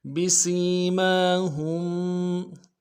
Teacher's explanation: ہا کو میم ساکن کے ساتھ ملانا ہے، میم ساکن میں غنہ کریں گے۔